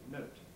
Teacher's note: Note, it may have a bit of aspiration, but not strong aspiration.